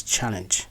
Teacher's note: the stress has a stable position which is the first syllable